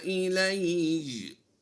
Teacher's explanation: یا کو ہم نے سختی سے پڑھتے ہوئے شد کی ادائیگی کرنی ہے